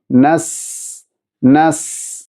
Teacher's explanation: സീനിൻ്റെ സിഫത്തുകളിൽപ്പെട്ടതാണ് ഹംസ് എന്ന സിഫത്ത്, അഥവാ ഉച്ചാരണത്തിൽ കാറ്റ് നടക്കേണ്ടതുണ്ട്. അതുപോലെ റിഹ്വ് എന്ന സിഫത്തും സീനിന് ഉണ്ട്, ശബ്ദവും നടക്കേണ്ടതുണ്ട്.